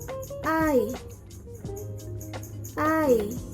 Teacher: This vowel is made from the vowel sounds A and E. A, E. Then it becomes I.